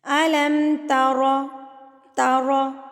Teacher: را کے اوپر جب زبر آتی ہے نا تو را کو موٹا پڑھا جاتا ہے